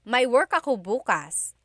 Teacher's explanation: If you say bukas, emphasis is on the first syllable. that means tomorrow.